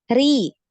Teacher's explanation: Sedangkan ketika muraqqaqah ya atau tarqiq atau tipis, nah ini pangkal lidahnya tidak naik ya.